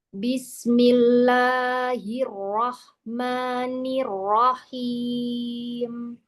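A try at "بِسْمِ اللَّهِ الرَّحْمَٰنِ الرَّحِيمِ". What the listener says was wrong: Madnya yang 2 harakat itu Mi, jangan kepanjangan ya.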